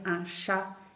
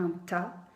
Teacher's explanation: il y a également des enfants qui peuvent transformer le ch en phonème occlusif, par exemple en te. C'est-à-dire, au lieu de dire un chat, ils vont dire un ta.